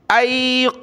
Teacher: क़ाफ और ज़ा दोनों को मोटा पढ़ना है